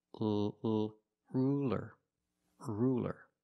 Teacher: because it's between vowels so it's not ruler it's ruler ruler use a light L it's straighter